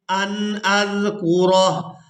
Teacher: ہا کو ساکن کر دیں گے وقف کی وجہ سے اور را کو ہا ساکن کے ساتھ ملائیں گے